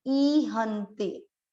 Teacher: इसको कई लोग ईहंते पढ़ते हैं, ये बड़ी मात्रा है, ईहंते। ई बड़ा लंबा खींचना है, क्योंकि मात्रा बड़ी होते ही आपको उसको उच्चारण में अधिक समय देना है। ई ह के बाद है आधा न, आधे को पूरे के साथ बोलना है, अंडरलाइन इसलिए लगाई, हन ते, ई हंते, ई हंते काम भोगा।